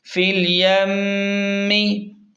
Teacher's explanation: زیر فل یا میم زبر یم میم زیر می فل یمی، میم پر غنہ کریں گے کیونکہ میم مشدد پر ہمیشہ غنہ ہوتا ہے ہر حال میں